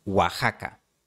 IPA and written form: wa'xa.ka (Oaxaca)